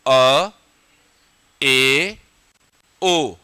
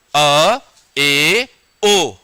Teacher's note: विवृत से थोड़ा कम लेकिन अर्ध संवृत से थोड़ा ज्यादा मुख खुले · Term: अर्ध विवृत